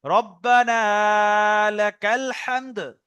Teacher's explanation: রব্বানাটা টান হবে, বাকি কোনো জায়গায় টান নেই